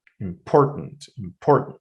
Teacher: So the first part I'm not that im is not really pronounced strongly as well as the end of it tent is not really pronounced uh let's say strongly the only part that is stressed is poor